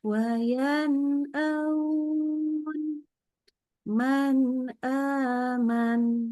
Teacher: Jadi bacanya jelas huruf nunnya, kita nggak tambahin dengung. Ini kalau ketemu hamzah ya.